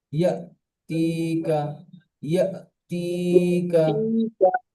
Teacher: হামজা, আলিফ সাকিন হামজার আলা উপরে হামজা, যজম, সাকিন আলা হামজা, সাকিনওয়ালা হামজার উপর হামজি সাকিন আলা এসেছে, হামজা ধাক্কা দিয়ে বা ঝাটকা দিয়ে উচ্চারণ হয়। ঝাটকা দিয়ে বা ধাক্কা দিয়ে পড়তে হবে, পড়তে হবে।